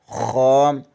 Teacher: خا حلق کے اوپر والے حصے سے ادا ہوتا ہے